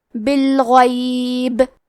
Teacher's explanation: پہ رکے تو با پہ جزم سے رکیں گے تو یہاں با کا حکم ہوگا قلقلہ، لہذا ہمیں یہ حرف کو ہلاتے ہوئے یہ کلمہ کو پڑھنا ہے